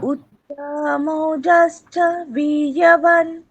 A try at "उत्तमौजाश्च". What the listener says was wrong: হ্যাঁ, এখানে দেখুন উত্তম ঔজাশ্চ, ওখানে তয়ের পরে আর আকার নেই, সুতরাং ওটার কোনো টানার কোনো প্রয়োজন নেই। উত্তম ঔজা, আবার ওখানে বর্গীয় জয়ের পরে আকার আছে, সুতরাং ওটাকে দীর্ঘ বলতে হচ্ছে।